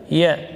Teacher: ya rakhawah dan jahar keluar di tengah lidah